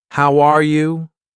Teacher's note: my voice goes up at the end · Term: Intonation